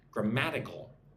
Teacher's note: So 4 syllables. Put the emphasis on the second syllable.